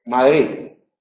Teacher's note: En esas posiciones, en posición intervocálica y en posición implosiva, la D tiende a relajarse en la pronunciación. Es decir, el sonido que representa ese fonema no es el sonido tenso, oclusivo, dental, sonoro, sino que se relaja.